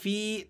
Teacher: تو یہ یا مدہ ہے، آپ نے اس کو ایک الف تک کھینچ لینا ہے